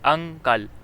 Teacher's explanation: ہم رک کر بولتے ہیں، اسے اخفا کہتے ہیں۔ لفظ انکل میں ہم نون کی آواز پوری نہیں نکالتے بلکہ نون کی آواز ذرا سی چھپ جاتی ہے، یہی مثال اخفا کی ہے۔